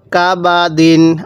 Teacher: বায়ের মধ্যে টান দিবেন না।